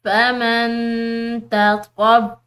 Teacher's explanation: نون ساکن ہے، اس کے بعد تا حروف اخفا میں سے ہے، تو یہاں پر ہم اخفا کریں گے